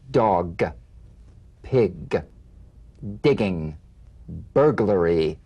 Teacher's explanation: gah gah good cognate the voiced tongue back plosive consonant G place the back of the tongue in gentle contact with the soft palate let the tongue spring away